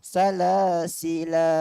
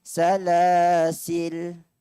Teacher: Pertama, membunyikan alif selepas lam tu. Salasila. Dua harakat. Yang kedua, matikan lam. Alif tu dihazafkan, dibuang.